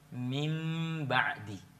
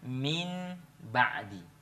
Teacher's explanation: kalau dia bertemu dengan sukun bertemu dengan ba, maka tentu suara nun itu jadi mim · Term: iklab